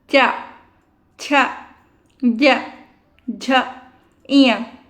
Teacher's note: च वाला क्या करता है तालु को टच करता